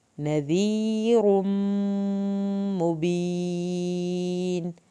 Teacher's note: मीम की शत पे एक अलिफ के बराबर देर लगेगी